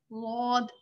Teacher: आपने अपनी जबान को थोड़ा सा पीछे ले जाके और ऊपर की जो दाढ़ें हैं उसके मसूड़ों से टच करना है। ठीक है, गौद, फिर ये गौद खुद ब खुद ही मोटी सी साउंड निकलेगी इसकी।